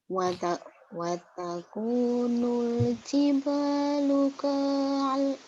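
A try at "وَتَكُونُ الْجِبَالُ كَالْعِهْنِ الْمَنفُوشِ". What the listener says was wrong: Kal. K-nya mantobi jadi pendek karena ketemu alif lam komaria.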